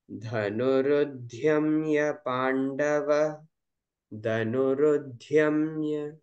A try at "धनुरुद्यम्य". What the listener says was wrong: ध महाप्राणः धनुरुद्यम्य नॉट धम्य Yes, and Dhyamya, the is Alpaprana. धनुरुद्यम्य पांडवः।